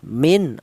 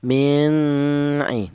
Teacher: nun mati berjumpa dengan huruf ain dibaca izhar · Di sini ada nun mati. Di mana nun mati ini berjumpa dengan ain, ini dibaca idhar. Artinya idhar itu jelas.